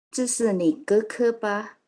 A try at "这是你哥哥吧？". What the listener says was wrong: Ke. Jadi ke-nya bersih, nggak pakai k ya. Ke.